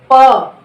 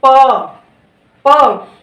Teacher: फिर ओष्ठ, ओष्ठ को कैसे बोलते हैं, अरे सॉरी होठ से कैसे बोलेंगे प, देखिए दोनों होठों मिल रहा है प, यानी कि आपकी जो हवा निकलती है, जो आपके वर्ण निकलते हैं होठों को छूते हुए निकल रहा है